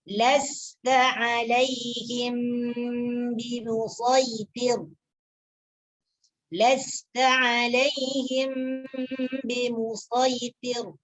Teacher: Jadi perkataan shad di sini tetap dibaca shad, ya, tetap dibaca shad, tidak dibaca dengan sa.